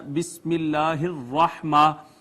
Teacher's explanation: را مفتوح ہو تو مفخم پڑھی جاتی ہے، یعنی موٹی پڑھی جاتی ہے، اس کو باریک پڑھ دیں۔ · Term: تفخیم